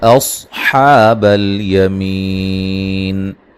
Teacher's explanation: الا اصحاب الیمین، لام پہ جو مدہ مدے جائز ہے. صاد کو موٹا ادا کریں گے، حا مد اصلی ہے، می یا مدہ ہے، وقفاً بڑی مد کے ساتھ پڑھ سکتے ہیں.